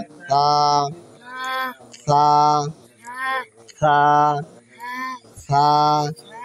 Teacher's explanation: জিহ্বার আগার সামনে উপরে দুই দাঁতের আগার সঙ্গে লাগে তা তা তা তা নরম ভাবে উচ্চারণ হবে